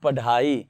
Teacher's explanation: उत्क्षिप्त ध्वनि का प्रयोग हुआ है। उत्क्षिप्त का मतलब होता है उछला हुआ